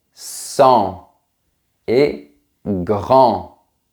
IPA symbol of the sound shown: ɑ̃